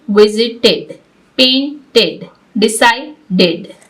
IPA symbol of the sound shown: ɪd